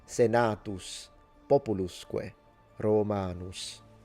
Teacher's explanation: Possibly with a retracted S at the end, so in between a sh and a s.